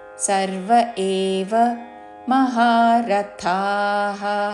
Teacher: రథా మహాప్రాణాక్షరము థా దీర్ఘముతో చివరిలో విసర్గ